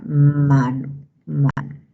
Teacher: la M es un sonido nasal bilabial sonoro